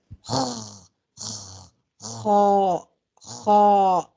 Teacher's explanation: ہمیں یہ آواز ناک سے نہیں نکالنی، حلق کے اوپر والے حصے سے نکالنی ہے جو منہ کی جانب ہے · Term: خرخر کی آواز